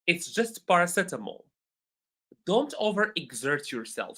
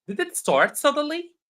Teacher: my voice goes down for normal sentences, and my voice goes up for questions